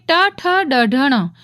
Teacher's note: ટ ઠ ડ અઢણ આ પાંચે એને મૂર્ધન્ય કહેવાય કારણ કે એનો ઉચ્ચાર કરતી વખતે જીભ છે એ મૂર્ધાને લાગશે